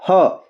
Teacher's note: बिल्कुल हमारे गले से आवाज आती है सीधा मतलब ना तो जीभ का कोई इसमें इनवॉल्वमेंट है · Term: कंठ